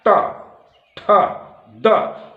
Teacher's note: फिर देखिए तो अब तक जिह्वा आपकी जो तालु के पास आई थी, टेढ़ी होकर टच कर रही थी, वह जिह्वा पूर्ण रूप से फैल गई और फैल करके जो दांत है उसको अब छू रही है, दांत और मसूड़े को दबा रही है